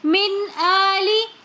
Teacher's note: یہاں پر ہم پڑھیں گے من آلی، یہاں پر ہم نون کے اوپر غنّہ بالکل بھی نہیں کریں گے،